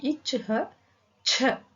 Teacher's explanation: first letter உடைய மெய்யெழுத்து சொல்லி அது கூட ஹ சவுண்ட் சேர்த்துக்கணும்